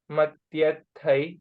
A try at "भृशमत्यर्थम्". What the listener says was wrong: थम yair no yai is not there tyartham